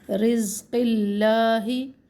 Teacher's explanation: मिर रिज़्क़िल्लाहि, अब रा को यहाँ पे मोटा ना पड़े। अल्लाह का नाम इसमें जलाला बारीक पड़े क्योंकि अल्लाह के लाम जलाला से पहले क़ाफ के नीचे ज़ेर है